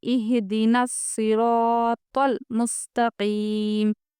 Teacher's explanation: دیکھیے اہدنا الصراط المستقیم، ہا کی آواز نکالیں گے کیونکہ ہا جزم والا حرف ہے، پیچھے والے حرف سے ہم ملا کے پڑھیں گے۔ نہ یہ حروف قلقلہ ہے، نہ ہی را ساکن یا ہے، یا نہ میم ساکن ہے، اس لیے ہم بولیں گے جزم والے حرف کو پیچھے والے حرف سے ملا کر پڑھیں۔